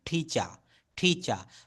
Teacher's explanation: এটা আমেরিকান অ্যাকসেন্টে কোনো শব্দের শেষে আর থাকলে সেই আর এর উচ্চারণটা করতে হয় না